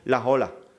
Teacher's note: la S del artículo no la hacemos desaparecer, sino que se engancha con la O de la palabra ola